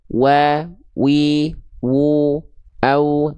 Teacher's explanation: Kedua bibir. Nah, jadi wau itu dilafalkan dari kedua bibirnya